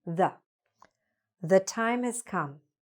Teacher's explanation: Before a consonant sound, we're going to say: Thuh.